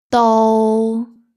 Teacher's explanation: 到 is a mid-level flat tone. 到 so low flat, mid flat.